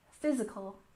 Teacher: we stress the first syllable in physical